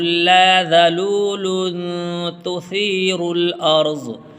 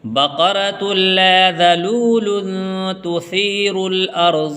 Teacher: اخفا کریں گے، تنوین کے بعد اخفا کے 15 حروف میں سے تا آیا ہوا ہے